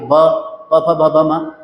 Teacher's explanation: पूरा प वर्ग ही आपका ओष होता है